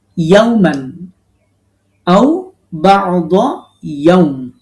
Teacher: ইয়াউতে মাদলিন আমরা দুই আলিফ টেনে পড়ব মিমে সাকিন দিয়ে অক্ফ করব তাহলে এই ছোট্ট অংশটা আমরা তেলাওয়াত · কঠিন হয় ক্বালা কতে একালিফ মাদ লাবিস্তু ইয়াওমান আও বা'দা ইয়াওম এই ইয়াউতে মাদলিন আমরা দুই আলিফ টেনে পড়ব